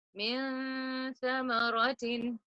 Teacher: pull the noon in your nose and keep your tongue ready to say the letter tha, which is an interdental letter. So your tongue has to be near your teeth.